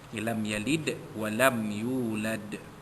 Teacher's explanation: dal mati itu berada di hujung kalimah, maka kita nyatakan dengan kuat lantunan bunyi itu, qalqalah kubra, lam yalid walam yulad.